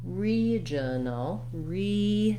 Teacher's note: in a word like regional, the first syllable with the letters RE is stressed, and it has the clear vowel E. So we see that with the little lowercase I in the IPA.